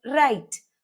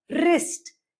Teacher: You only get to hear the R sound and W does not make any difference. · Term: silent W